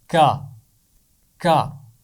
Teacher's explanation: تو بالکل یہ اس کا مخرج ہے، زبان کی جڑ اور اوپر کا تالو، اور وہاں سے اس کی آواز نکلتی ہے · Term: کاف